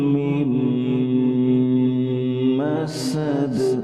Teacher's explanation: یہاں میم کے اوپر شد ہے لہٰذا یہاں پہ بھی ہم غنہ کریں گے اور پچھلا میم جو ہے اس پہ بھی ہم غنہ کریں گے.